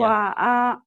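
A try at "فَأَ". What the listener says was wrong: Bukan wa, itu fa. Fa'a. Fa'a. Fa'a.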